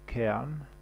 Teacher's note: Il est noté par un A renversé, donc c'est quelque chose qui est entre un E, un schwa, et puis un A. Et il y a un symbole phonétique pour le décrire exactement.